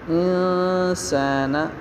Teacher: اب نون ساکن یہاں پہ اخفا ہوگا